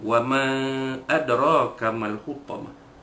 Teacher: Ma adraka, ma itu mad jaiz munfasil. Alif pada ma bertemu dengan hamzah pada adraka, maka hukum dia mad jaiz munfasil harus dipanjangkan 4 atau 5 harakat. Munfasil kerana huruf mad itu bertemu dengan huruf selepasnya pada kalimah yang berasingan.